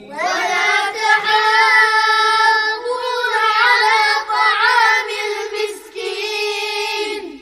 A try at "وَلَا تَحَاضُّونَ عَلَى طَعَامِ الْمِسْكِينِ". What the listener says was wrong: طولوا المد شوية.